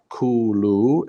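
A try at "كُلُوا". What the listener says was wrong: Okay, so why are you pulling the kaf? After the kaf, is there wow? Kulu.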